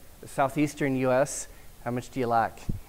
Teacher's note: In some dialects, like African American dialects, a diphthong will be reduced to a monophthong